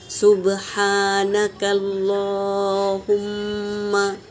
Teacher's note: सुब्हाना बा सुकून है तो खलखला होगा, हा हवा के साथ निकलेगा और खड़ा ज़बर है तो एक अलिफ के मिकदार खींच के पढ़ेंगे। सुब्हानकल अल्लाह के लाम से पहले ज़बर है तो अल्लाह का लाम पुर पढ़ेंगे और मीम पर तशदीद है तो इसका गुन्ना होगा।